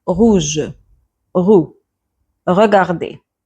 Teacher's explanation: Usually French people, many people will pronounce it like, will give a gargling sound. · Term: R sound